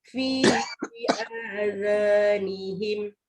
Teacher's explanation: Ini huruf zal, lidah kena keluar tapi tak tebal. Jadi relax tapi pastikan lidah keluar.